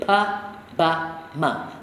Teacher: Those are the frontal plosive sounds and nasal sounds. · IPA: /pa/ /ba/ /ma/